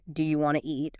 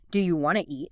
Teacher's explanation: Sometimes sounds are dropped entirely, like the T often disappears in want to.